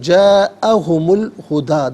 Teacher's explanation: اسے ہم پڑھیں گے جاءہم الہدا، درمیان میں سے الف حمزہ کو حذف کیا جائے گا۔